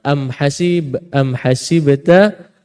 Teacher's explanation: di sini dengungnya ada tapi tak sempurna am Hasib am hasibta pada kalimah am tersebut dipanggil dengung tak sempurna